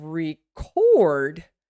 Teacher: So when I say record, record, look how much longer the record, the syllable record is. Now, when I have record, the syllable cord is going to be longer.